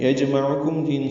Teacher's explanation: جیم ساکن پہ قلقلہ ہے، عین وسط حلق سے ادا ہوگا، کم میں کاف باریک میم ساکن پہ اظہار شفوی.